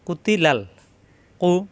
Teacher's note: কু জিব্বার গড়া থেকে